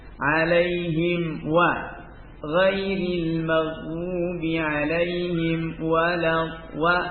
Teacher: ini sudah alaihim wa izhar. Jangan sampai ada gunnah ya. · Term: izhar syafawi